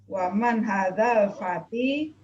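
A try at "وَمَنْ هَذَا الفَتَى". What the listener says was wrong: Fata, bukan fati ya, fata.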